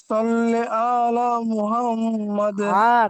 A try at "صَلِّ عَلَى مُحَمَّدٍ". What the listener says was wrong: টান দিয়েন না, আলা আলা মুহাম্মদ।